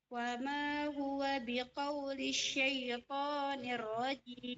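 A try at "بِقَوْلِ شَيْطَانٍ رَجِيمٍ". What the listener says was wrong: Jangan ditasdidkan biqaulish syai, enggak boleh. Tidak ada tasdid di sya. Tidak ada tasdidnya.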